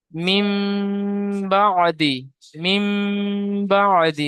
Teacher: তাহলে তানবিন ও নুন সাকিনের পরে যদি বা আসে, তাহলে তানবিন বা নুন সাকিনকে মিমের দ্বারা পরিবর্তন করে এক আলিফ পরিমাণ গুণনা সহ পড়তে হয়। একে ইকলাব বলে।